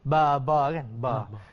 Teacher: dia adalah huruf syafatain, ya, dua bibir yang bertemu yang menyebutnya ba. Dia tak boleh va.